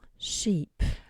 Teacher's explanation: le deuxième c'est un i, un vrai i, un i long.